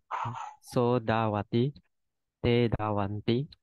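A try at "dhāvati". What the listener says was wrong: Okay, because the DHAV is a long A, so Bante, you need to stress on it. So da make the sound a little bit heavy. So dawati, you know. Make your sound low and heavy. Da, you know.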